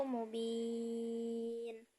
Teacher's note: pada ujung kalimat yaitu mubin dibaca panjang dua harakat atau empat harakat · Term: Mad aridli sukun